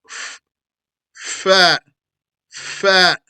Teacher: the bottom lip cooperating with the teeth · Fat is the cousin because fat is the only one from one lip. The rest of the family come from two lips. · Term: lip letters